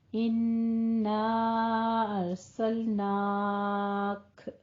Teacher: काफ के ऊपर हमस करके वक्फ कर देंगे